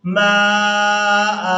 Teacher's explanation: وهو الذي أنزل من السماء वहुवल्लज़ी अंज़ल मिनस्समाइ माआ। हमजा को वक़फ़ की सूरत में एक ज़बर के साथ अदा करते हुए खींचकर अदा करेंगे